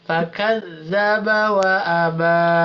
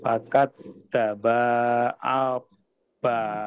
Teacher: Semuanya ini pendek, cuman panjang itu di ujung aja. Jadi dari fa sampai ke a itu pendek semua. Yang panjang cuman ba-nya aja.